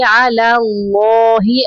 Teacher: اللہ کا لام پر پڑھیں گے پہلا لام باریک پڑھیں گے